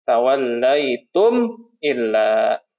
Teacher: mim sukun bertemu dengan huruf hamzah ya maka dibacanya jelas